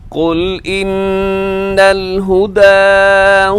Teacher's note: इन नून मुशद है यहां गुना कीजिएगा · ان نون مشدد ہے یہاں غنہ کیجیے گا